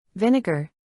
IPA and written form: ˈvɪn.ɪ.ɡɚ (Vinegar)